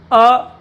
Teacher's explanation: जिह्वा के मध्य भाग से बोला जाने वाला स्वर